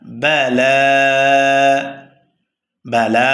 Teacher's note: লামের উপরে খারা জবর আসার কারণে এক আলিফ টান হবে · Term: মাদ্দে তবাই